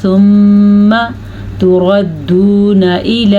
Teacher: میں نے غنہ کیا ہے، لیکن اگر آپ اس کو میم کو لمبا کریں گے تو آپ غلط کر دیں گے، یعنی کہ ثم ایسے نہیں پڑھنا، آپ نے پڑھنا ہے ثم تردون الی۔